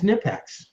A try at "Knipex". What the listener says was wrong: Yeah, it's the thing is we're all saying it wrong. yeah, you actually do have to pronounce the K.